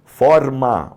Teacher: O som é aberto